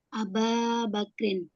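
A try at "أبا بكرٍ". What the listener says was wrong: Betul.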